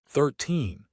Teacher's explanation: The secret is the stress. For teen 13 to 19, the stress is on the end.